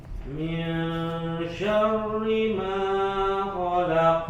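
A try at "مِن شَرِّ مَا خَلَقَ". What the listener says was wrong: Nah, ma 2 harokat. Huruf qalqalahnya kurang kencang nih.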